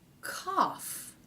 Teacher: we have the aw vowel and somehow an F consonant has crept in.